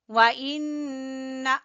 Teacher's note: व इन्ना, नून मुशद्दद का गुन्ना।